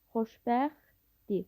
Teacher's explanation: Xoşbəxtdir sözündə isə T samiti tələffüz zamanı düşür.